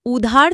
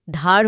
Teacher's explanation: আদি স্বরলোপ, শব্দের শুরুর স্বরধ্বনিটাই বাদ পড়ে যায়।